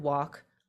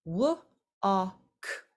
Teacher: W, a, k. I don't hear, or I don't seem to hear, the letter L making a sound.